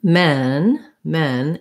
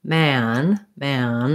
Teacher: i really should feel my jaw is more open and my tongue is much lower for the a vowel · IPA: /æ/